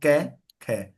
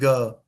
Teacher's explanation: और क ख में कोई कंपन नहीं है